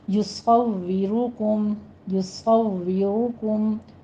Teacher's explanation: صاد بھی پر ہے، را بھی پر ہے